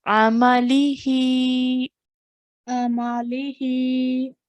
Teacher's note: the ayn, the meme, and the lam are being pronounced for 1 count or 1 second, and the ha is for 2 seconds or 2 counts